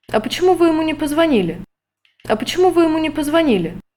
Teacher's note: Another option is a hat pattern, which I analyze as a sequence of two pitch accents connected by high-level transition.